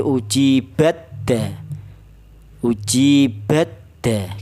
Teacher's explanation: Artinya keluarnya huruf tersebut baik huruf ta dan huruf dal itu ada adalah sama yaitu di ujung lidah menyentuh pangkal gigi seri atas